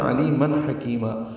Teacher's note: عین وسط حلق سے ادا ہوگا، لی یا مدہ ہے، من میں اظہار ہے تنوین کے بعد ہانی کی وجہ سے، کاف باریک حکیما مال مدہ مد عوض، دو دو حرکات لمبا کریں گے کاف اور میم کو.